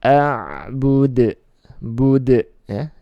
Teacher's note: Dal sukun karena waqaf, maka dibaca qalqalah ya, dipandulkan. A'bud, bud ya, jangan sampai bud, enggak ada pantulannya, tapi dipandulkan.